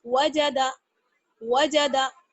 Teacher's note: کھینچنا نہیں ہے, اگر ہم واو کو کھینچ دیں فار ایگزامپل واجدہ ہو جائے گا, غلط. اگر ہم جیم کو کھینچ دیں تو کیا ہو جائے گا, وجادہ, یہ بھی غلط.